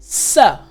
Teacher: So what's happening is in your mouth, your tongue, the tip of your tongue is almost touching the roof of your mouth. And you're allowing air to pass over and through your teeth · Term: the S sound